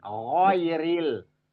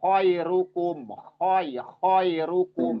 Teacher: Suaranya kasar ya. Kasar seperti orang ada apa ya, reak lah, seperti ada reak, ada pasir-pasir gitu. Kasar suaranya. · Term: ghin dan kho